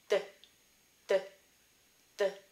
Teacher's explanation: and instead of hitting your alveolar ridge or underneath your teeth the blade of your tongue touches the back of your front tooth and you get sign of a dull d sound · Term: dentalized D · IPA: d̪